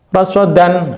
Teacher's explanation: jadi ini shotnya tetap harus dibaca tafkhim gitu ya